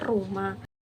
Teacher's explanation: huruf R yaitu getar alveolar seperti pada kata rumah